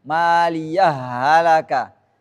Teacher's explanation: Ada dua cara bacanya. Kalau idgham berarti kita masukkan hal pertama, maliyah halaka tanpa ada jeda.